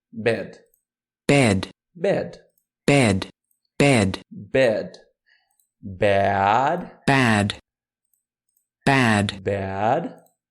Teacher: É como se você fosse falar um é só que com a boca aberta com o queixo caído